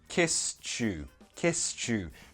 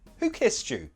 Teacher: So that ed is a t sound. When we combine a t with the next word, which is a y sound, those have a little sound baby that sounds like this. Ch. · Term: connected speech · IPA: /tʃ/